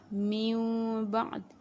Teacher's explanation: Mim tanwin di situ ataupun nun mati di situ ditukarkan kepada mim. Ini terjadi sewaktu apabila berjumpa dengan ba sahaja. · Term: iqlab